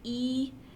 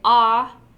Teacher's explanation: So that refers to how close to the roof of your mouth your tongue is when you're making that vowel sound. So again, if you say E, your tongue is up pretty high. If you say Ah, your tongue is down pretty low.